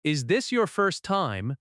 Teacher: with a slight rise at the end, it sounds open and friendly. Let us practice a short boarding moment together.